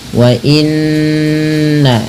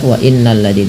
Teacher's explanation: Ini ada bacaan gunnah, cara membacanya menahan bunyi suara n-nya atau bunyi suara nun-nya sepanjang 2 harokat